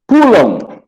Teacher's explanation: além de ser nasalizado, o M tem som de W, ou som de O